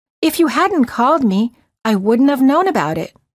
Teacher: instead of wouldn't have we say wouldn't of the T of the word not disappears